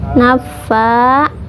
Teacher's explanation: fa-nya panjang karena ada fathah yang berdiri, berarti itu mad tabi'i ya.